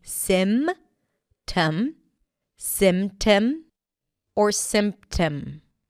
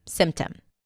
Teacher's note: Usually, when the P appears between two consonants, especially if the first one is an M, it often drops, like here, 'sym-tom'. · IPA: [sɪm-təm]